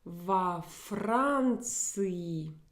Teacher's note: Do you see this modification of the preposition? I have to add this vowel O to break up this cluster of three consonants in a row.